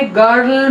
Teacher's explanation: central vowel between half close and half open position, it is also unrounded vowel